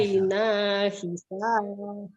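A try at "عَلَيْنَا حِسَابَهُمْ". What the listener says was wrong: Ya hi, jangan i ya. Hi.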